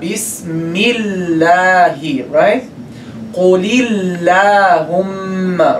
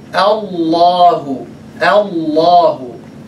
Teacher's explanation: the lam is heavy because it's preceded by fatha